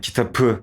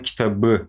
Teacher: p B'ye dönüşüyor Ç C'ye dönüşüyor böyle devam ediyor işte kağıtı demek yerine kağıdı diyoruz veya ayaka diyeceğimiz yerine ayağa